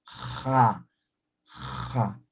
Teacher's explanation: pero esto es fricativa como si estuviera raspando pero desde la garganta